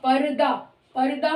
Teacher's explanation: र पूरा नहीं है बल्कि पर्दा को इस तरह से लिखेंगे र क्योंकि आधा है रा की साउंड हल्की सी आ रही है और द पर हम जा रहे परदा दा पर रुक रहे